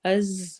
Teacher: از میں سیٹی والی آواز ہوگی۔